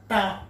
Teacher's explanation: ట పలికినప్పుడు వచ్చే మన నాలుక ఎక్కడైతే స్పర్శ అవుతుందో దాన్ని మూర్ధన్య అంటాము